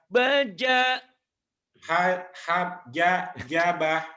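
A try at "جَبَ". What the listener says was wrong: Iya tertukar. Jabah iya.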